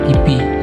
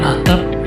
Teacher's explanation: Contoh bunyi P pada kata pipi, aspirasi tipis, dan atap tidak dilepaskan atau meletup. Keduanya tetap merupakan anggota dari fonem P. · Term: alofon